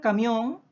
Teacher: son palabras que llevan la mayor fuerza de voz en la última sílaba